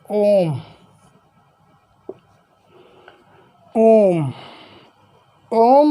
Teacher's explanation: ये 2 मात्रा काल से अधिक का समय लेता है, ये पुरुष स्वर होता है